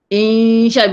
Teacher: Bunyi insya ni jangan naik suara tu jangan naik ke atas.